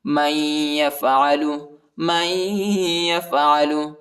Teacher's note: ہے، ٹھیک ہے، فما جزاء، فما جزاء من يفعل، من يفعل، میم کو یا کے ساتھ ملائیں گے، نون نہیں پڑھا جاتا، نون کے اوپر حرکت نہیں ہے، اور ادھر غنہ بھی کریں گے